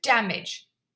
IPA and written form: ˈdæmɪʤ (damage)